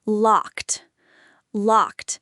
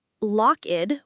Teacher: It's not 'lock-ed' with two syllables. It's just one sharp syllable with a crisp 't' at the end. You can practice saying: 'I am locked out.' Try to connect the words naturally: 'I am locked-out.' Perfect.